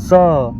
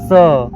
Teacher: उदाहरण स यानी कि इसमें हवा थोड़ा सा तेज आया, अपने हाथ के पास करके इसे बोलिए स, ज्यादा हवा आया और फिर बोलिएगा स, और फिर बोलिएगा स, और फिर बोलिएगा ह, यानी कि हल्का हल्का चेंज देखने को मिलेगा। जैसे आप स कहते हैं तो हवा आपके दांतों और जीभ के बीच रगड़ खाती है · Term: संघर्षी व्यंजन